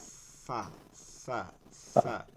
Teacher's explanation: আর 14 নম্বর মাখরাজ নিচের ঠোঁটের পেট সামনের উপরে দুই দাঁতের আগার সঙ্গে লাগায়, সামনের উপরে দুই দাঁতের আগার সঙ্গে লাগায় আগা।